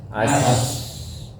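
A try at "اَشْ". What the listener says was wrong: Ash. Ingat di tengah lidah, bukan di ujung lidah, bukan as, tapi ash.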